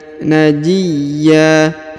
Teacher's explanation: Najiyya, kemudian huruf ya ditahan dan ditekan lalu dipanjangkan 2 harokat. Tanwinnya berubah menjadi a ya, bukan lagi an tapi a, karena berada di ujung ayat atau di ujung bacaan